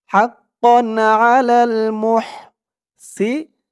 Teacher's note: হাক্কান আলাল হাক্কান আলাল মুহসিনি মুহ মুহ মিম দিয়ে হা ধরবে, মুহ হার উচ্চারণটা গলার ভিতর থেকে চিকুন করে আনতে হবে।